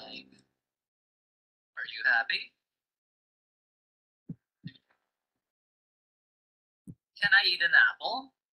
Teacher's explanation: now let's look at when the sound Rises the sound Rises for yes no questions